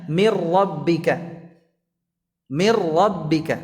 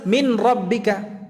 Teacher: Itu kan asalnya Min dan rabbika Kenapa dibaca mir rabbika dengan Idgham untuk memudahkan itu kalau dibaca dengan jelas Min rbika sulit berat di lidah